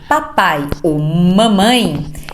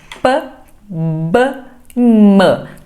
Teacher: Por exemplo, gente, quando eu falo papai ou mamãe, eu estou fazendo fonemas que a gente chama de bilabial. São fonemas produzidos com os meus dois lábios, o superior e o inferior. P, B, M.